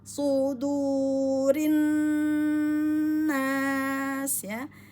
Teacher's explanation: Rin masuk ke nun tajibul gunnah wajib dengung 2 harokat ya. Yang sangat teman-teman harus perhatikan pada nun tajibul gunnah itu hukumnya harus dibaca 2 harokat, ditahan dulu kemudian baru dipanjangkan karena ada matahari trisukun ya.